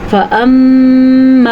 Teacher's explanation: फ़अम्मा, ये है गुन्ना, होंठ बंद करके नाक में आवाज़ लेके जानी